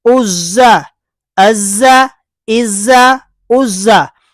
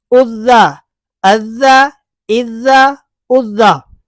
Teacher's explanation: یہ زا ہے صفیریہ، یہ ذال ہے نرمی کے ساتھ